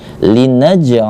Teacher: ada pantulan tapi pantulannya tak begitu besar karena berada di pertengahan bukan di akhir ayat ataupun di akhir ketika kita waqaf Nah maka dinamakan dengan Qalqalah